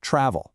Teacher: Take the verb travel. In American English, we put the stress on the first syllable